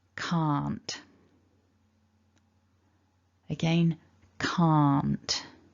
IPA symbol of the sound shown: ɑ: